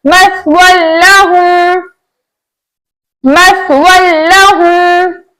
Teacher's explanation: हमने वाव की दो जबर की तनवीन को लाम के साथ इस तरह अदा किया कि दोनों एक साथ मुशद्दद अदा हुए लेकिन गुन्ने के बगैर। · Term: इदगाम बिला गुन्ना